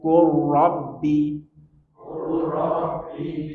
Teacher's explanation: lam sukun bertemu dengan ro langsung masuk ke ro seakan-akan lamnya hilang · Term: Idam mutaqoribain